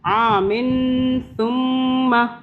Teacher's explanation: من، یہ جو نون کی آواز آ رہی ہے اس پہ ہم اخفاء کریں گے. آمن ثم، میم کے اوپر تشدید آ رہی ہے، اس پہ ہم یہاں بھی ہم رکیں گے 2 سیکنڈ کے لیے